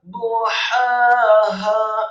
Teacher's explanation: Wa akhraja duhaha, rohnya dibaca dhammah, tafkhim, dengan posisi lidah kita di langit-langit atas, dhammah 1 harokat, kemudian hak yang pertama tipis, nyaring keluar dari lidah, tenggorokan bagian tengah, fathah 2 harokat